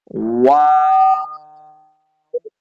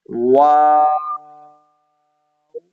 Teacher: یہ جو مد ہے اس کو آپ نے 3 سیکنڈ کھینچنا ہے، یہ مد لازم ہے، وا، شروع میں بھی ہونٹ گول ہوں گے، اور جب آپ اس کو ختم کرنے جائیں گے آخر میں بھی آپ نے ہونٹوں کو گول کرنا ہے